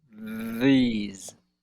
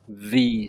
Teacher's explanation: throughout the entire word, every letter there, they are all vibrating. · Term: th sound